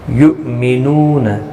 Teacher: حمزہ ساکن کو جھٹکے کے ساتھ ادا کرتے ہیں۔